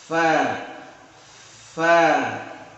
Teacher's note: bertemunya ujung gigi atas dengan perut bibir bagian bawah